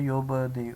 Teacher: یہاں پہ با پہ قلقلہ ہو رہا ہے